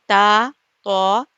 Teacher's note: زبان کی نوک یہ ثنایا علیہ یعنی اوپر کے 2 دانت اور اس کی جڑ سے لگ رہا ہے، وہاں سے تا، تو، دال ادا ہوا۔